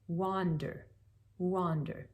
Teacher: the w which is almost like an oo it's not quite all the way to that vowel but it glides through it kind of quickly so wander wander you could say wander but that's a little · Then we have what are known as glides, and those again are consonants that really act like vowels, as in w, the W, which is almost like an oo. It's not quite all the way to that vowel oo, but it glides through it kind of quickly.